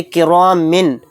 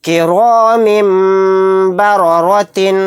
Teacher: تو یہاں پر دیکھیے اگر یہاں پر اقلاب کا قاعدہ نہ ہوتا تو کس طرح سے میم پہ آواز نکلتی، کرام من، یعنی من کہتے ہوئے لاسٹ میں نون کی آواز آتی، تو یہاں پر نون کی آواز لاسٹ میں نہیں آئے گی، میم کو میم میں ملا کر میم کی آواز آئے گی غنہ اور اخفا کے ساتھ، کیونکہ تنوین کے بعد با آ گیا، یہاں پر اقلاب کا قاعدہ ہو رہا ہے، میم کو میم سے ملا کر غنہ کے ساتھ پڑھیں گے۔